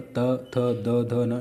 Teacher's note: ता वर्ग में जो आता है आपका त थ द ध न, इन्हें हम दंतव्य बोलते हैं, दांतों का मदद होता है